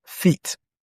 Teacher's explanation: And it is found in feet. Because it is a long frontal vowel sound. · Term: long E